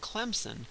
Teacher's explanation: So when someone says Clemson, what they're doing is they're taking the voicing from the M and they're making the fricative have that quality of voicing also · the Z is a voiced alveolar fricative. It now has something in common with the M. They're both voiced sounds.